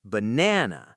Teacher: The middle is strong. The outsides are weak.